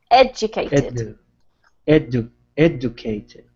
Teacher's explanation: try not to put too much emphasis on the cated and more on the beginning